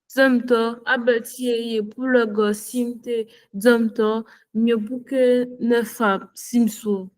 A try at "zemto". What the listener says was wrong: Tu cours, tu cours. Tu cours trop et puis tu te fais.